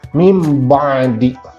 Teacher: nun mati kan ini, kemudian di depannya huruf ba, maka nunnya itu berubah menjadi mim, bukan nun lagi. Jadi kita bacanya mim ba'di. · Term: iqlab